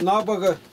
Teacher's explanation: у них все... ударение ставится на предлог